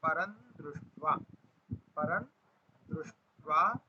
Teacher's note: परम में जो अनुस्वार है उसको न का उच्चारण करेंगे